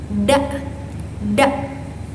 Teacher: Nah, huruf da ini keluar dari tempat yang sama seperti huruf ta, tapi dia tidak berhembus. Nah, dia tuh bersifat majhur dan infijari